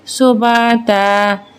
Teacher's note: دو زبر میں جب ہم وقف کرتے ہیں تو یہ اومٹ ہو کے ایک زبر پڑھا جاتا ہے